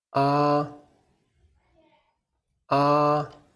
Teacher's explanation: The first tone is high and flat. The car goes straight. Your voice goes straight.